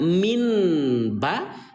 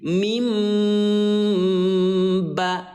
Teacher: Yang diganti adalah bunyi nun yang baris mati menjadi suara mim. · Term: iqlab